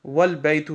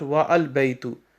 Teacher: But if it is preceded by wa, meaning and the a is dropped and the phrase is pronounced wal baytu, not wa al baytu